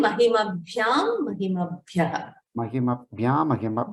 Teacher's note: We hear the Makara, only the Nakara gets deleted.